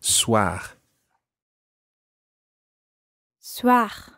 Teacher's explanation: it's a guttural R at the end